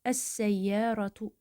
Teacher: Əgər biz bunun önünə əl hissəciyini artırsaq, bu zaman buradakı ləm yenə oxunmayacaq və əvəzində sin şəddələnəcək. Əs-səyyaratu olacaq.